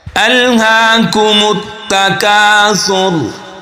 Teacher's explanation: हा को एक अलिफ के बराबर हम खींचेंगे, खड़ी ज़बर है। खड़ी हरकत में से कोई हरकत आ जाए तो एक अलिफ के बराबर खींच कर पढ़ते हैं।